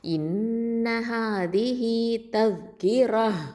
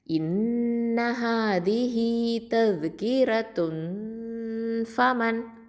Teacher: வக்ஃபு பண்ணும்போது ஹ சுக்கூனா மாறிக்கும்